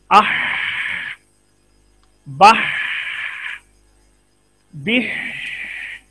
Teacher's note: ये बा की आवाज के बाद आप देखते हैं जारी सांस ही हमें नजर आता है।